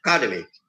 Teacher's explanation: In the word academy, the stress is on the ka.